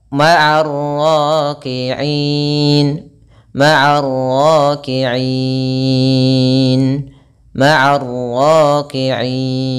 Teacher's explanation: Maka di sini i-nya itu kita boleh panjangkan 2 harakat, boleh 4 harakat, boleh 6 harakat. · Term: mad arid disukun